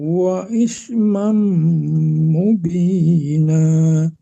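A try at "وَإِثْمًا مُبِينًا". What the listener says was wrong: Wa is lembutkan. Wa ismam masih keras membaca fa-nya. Sekedar menempelkan, jangan ditekan ya. Kalau ditekan jadinya keras bunyinya. Ditempelkan aja ujung lidah ke gigi atas ya.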